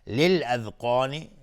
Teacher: للاذقان لام قمری است. قاف از حروف استعلاء و الف هم تابع قاف غلیظ تلفظ میشه